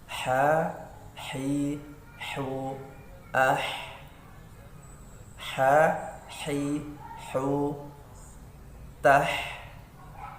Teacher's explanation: Kemudian yang berikutnya adalah huruf ha. Huruf ha, makhraj ha keluar dari tengah tenggorokan